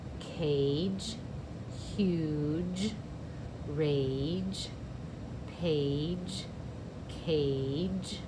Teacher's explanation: g say j i'm going to give these a j bridge they're all going to say that soft g sound and it's going to make the vowel say its name